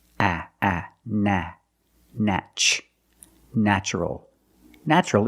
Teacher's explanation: the first syllable is pronounced with a short a like black cat